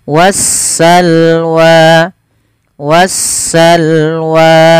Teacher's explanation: suara Alif lamnya diidgamkan ke huruf Sin sehingga sinnya berharakat tasdid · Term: alif lam syamsiah